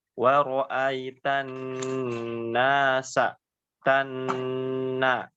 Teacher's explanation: Ketika menemukan nun yang bertasydid, dibacanya jangan terburu-buru, ditahan dengan tempo gunnah yang dipanjangkan atau lama ya.